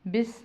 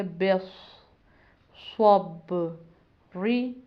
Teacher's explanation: صاد کو پر پڑھنا ہے، موٹا پڑھنا ہے، اس کی آواز کو سین کے ساتھ ملانا نہیں ہے، بس نہیں کرنا بلکہ بس، صب ری، آگے وقف، بس صبر۔